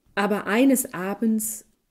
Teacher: où l'accent a été porté sur eines, le A de aber perd sa longueur, alors que celui de abends la garde. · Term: accent principal